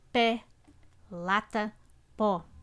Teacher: nesse caso som da vogal em destaque é mais forte mais aberto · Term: abertas